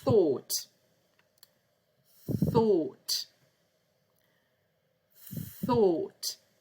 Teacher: tongue in the middle of your teeth